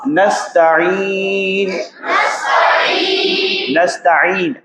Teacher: تا طا دونوں میں فرق ہے، دونوں کا مخرج تو ایک ہی ہے۔ زبان کی نوک جو ہے جب آپ ثنایا علیا یعنی اوپر کی جو دو دانت ہیں اس کی جڑ سے لگاتے ہیں تو تا کی آواز نکلتی ہے